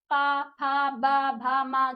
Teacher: जो हमारे ओठ हैं वह हमारे छू रहे हैं एक दूसरे को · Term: प वर्ग